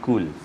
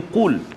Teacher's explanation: qaf dia duduk pangkal lidah kan, di kat belakang. Di dekat dengan anak tekak kan.